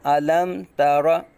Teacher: اظہار شفوی ہوگا. یعنی میم ساکن میں غنہ نہیں کریں گے، میم کو ظاہر کریں گے.